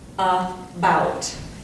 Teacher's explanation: the way you pronounce a schwa is sort of like a short U. Actually, it's exactly like a short U.